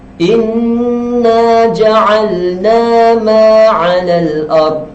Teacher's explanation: mad asli, iaitu alif, dibaca dengan 2 harakat panjang